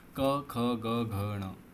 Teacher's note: क वर्ग पूरा जो होता है ना, क ख ग घ ण, है ना, ये होता है आपका कंठ से